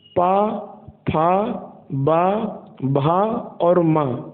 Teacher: ये सभी व्यंजन ओष्ठ की श्रेणी में कहलाते हैं, क्योंकि ये सभी व्यंजन होठ की सहायता से बोले जाते हैं